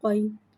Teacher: یا ساکن ہے، یا ساکن سے پہلے زبر آ رہا ہے، یا لین ہو رہا ہے لہذا یا لین کو بغیر کھینچے بغیر جھٹکا دیے نرمی سے معروف پڑھیں گے، اور زبر کو منہ کھول کے ادا کر کے پڑھیں گے۔ · قوف حرف مستعلیہ ہے لہذا اس کی آواز حلق سے موٹی ادا ہوئے گی